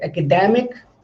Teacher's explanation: But when I say academic, then you will say that da here is stressed. Academic. So this is how stress functions and stress works in English language.